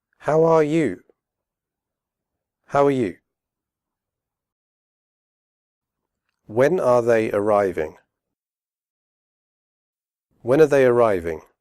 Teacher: in natural fast speech they all contain the schwa sound